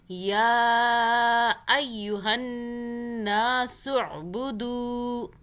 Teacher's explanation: یہاں پہ یا کو کھینچا ہم نے، اوپر کھڑا زبر بھی ہے، چھوٹی مدہ بھی ہے، 3 الف کے برابر کھینچا